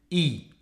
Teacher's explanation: Si l'on place un point ici, ça correspond donc à une voyelle pour laquelle la mâchoire inférieure est haute et l'avant de la langue également vers l'avant. Ça donne le son I.